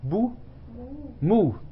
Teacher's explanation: Hein, et puis une voyelle longue. Et une voyelle longue plutôt fermée.